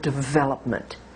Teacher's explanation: in American English we stress the second syllable V now stress again means that it can be longer louder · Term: word stress